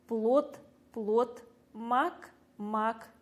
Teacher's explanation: в конце слова без сомнения происходит оглушение на конце слова слышатся глухой звук